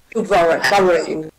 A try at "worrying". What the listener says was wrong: Again, close your eyes. Don't see that O. That's what's making you say wa. It's worrying. To worry.